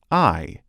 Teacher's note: The /aɪ/, like in the word “eye”, is produced by rapidly moving the tongue from the back, low part of the mouth to the forward, high part of the mouth. The jaw begins in an open position then rapidly moves to an almost closed position. Due to the mouth being open, the lips begin unrounded and apart and move into a retracted state, like a slight smile.